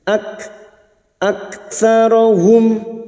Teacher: Kaf sukun yang memiliki sifat syidah dan Hames